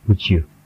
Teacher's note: Kalau kita baca satu-satu seperti what would you like to drink, tapi kalau kita gabungkan, would you seakan-akan keluar huruf J di tengah